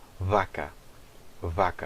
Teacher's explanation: é um som bilabial, não é um som lábio-dental. Em português nós fazemos aquele som de V lábio-dental, vaca, né? · Em português nós fazemos aquele som de V lábio-dental, vaca, né? Em espanhol eles têm já o V bilabial, vaca, vaca.